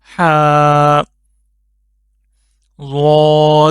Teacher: हा हलक के बिल्कुल दरमियान से निकलेगा